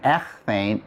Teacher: So here's my augment ἠ And then let me aspirate that gamma. So the gamma is going to become a chi χ.